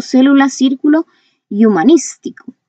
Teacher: la fuerza de voz está en la antepenúltima sílaba. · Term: esdrújulas